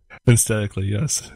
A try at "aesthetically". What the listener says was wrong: Why won't you pronounce the TH? Aesthetically.